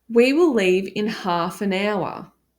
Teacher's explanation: the H is silent in hour